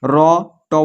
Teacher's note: इस सब का उच्चारण स्थान है मुर्धा